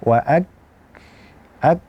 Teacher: Ketika kita melepaskan pangkal lidah kita dengan langit-langit atas, maka kita sedang memberikan sifat al-hamsu untuk kaf.